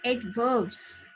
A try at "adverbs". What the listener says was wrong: B की आवाज नहीं देनी. Adverbs.